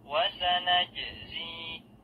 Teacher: Jim sukun hukumnya qalqalah, yaitu memantulkan bunyi huruf jim.